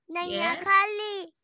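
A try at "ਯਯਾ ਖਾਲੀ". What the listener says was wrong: It's नैया नहीं है, ये यैया है। यैया, यैया से यैया खाली। It's यैया खाली।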